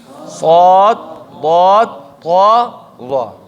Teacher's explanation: اطباق صفت به داسې راځي چې د دغو حروفو، د دغو څلورو حروفو د ادا کولو په وخت کې د ژبې منځ بره تالو طرف ته جګ شي او هلته پیوست شي، جګ شي او ونښلي.